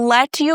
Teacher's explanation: T followed by Y gives the ch sound. That's why instead of let you, very often you might hear let you.